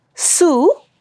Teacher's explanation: you'll see that for the consonant sound s it was unvoiced